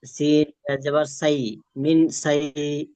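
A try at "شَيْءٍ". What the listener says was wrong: সিন না, শিন পড়েন। শিন, শিন ইয়া জবর শাই, তালবেশ দিয়ে।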